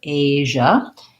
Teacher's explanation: basically it's like the sh sound plus the voice so if you can say sh and then turn your voice on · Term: j sound